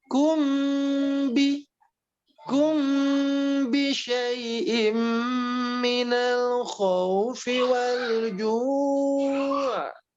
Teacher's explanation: Ikhfa artinya samar, syafawi di kedua bibir. Dan secara hukum itu ditahan lebih lama 2 harokat. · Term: ikhfa syafawi